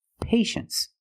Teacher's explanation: you see t i e in the second syllable you know the t is pronounced sh